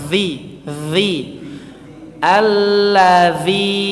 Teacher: zi-nya panjangkan 4 atau 5 harokat ya. Jangan lupa cara mengucapkannya juga sama, zi.